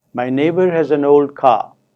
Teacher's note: there are stresses on the last two words